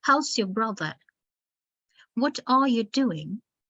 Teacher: Like the sentence falls, the intonation falls coming to the end of the sentence, like, how's your brother? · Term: falling tone